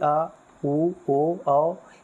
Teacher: जिन स्वरों के उच्चारण में जीभ का पश्च भाग, पश्च का मतलब पीछे होता है, यानी जीभ के पिछले भाग ये कार्य करता है, उसे पश्च स्वर कहते हैं